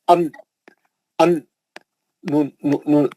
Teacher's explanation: जबान की नोक आके या मसोड़े को लगती, लगी तो नून निकलता